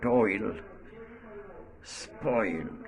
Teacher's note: This sound starts at o, the round vowel, and glides to e